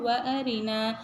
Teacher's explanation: இந்த ரா பார்த்திங்கன்னா லைட்டாக தான் சொல்லணும். இது வந்து தஃப்ஹீம் பண்ணக்கூடாது. ஏன்னா கஸ்ரா வரும்போது லைட்டாக சொல்லணும்.